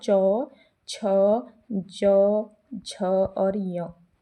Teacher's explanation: च वर्ग के व्यंजन तालव्य होते हैं। यहां तालु से इनका उच्चारण किया जाता है।